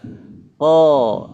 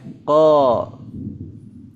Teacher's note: belakang sehingga nah sehingga menyebabkan suaranya tebal jadi sebabnya adalah istila pangkal lidahnya naik Tengah lidahnya ditarik ke belakang ya jadi istila hurufnya menjadi tebal